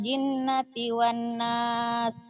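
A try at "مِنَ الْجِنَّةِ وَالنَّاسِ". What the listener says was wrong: Yo, pintar.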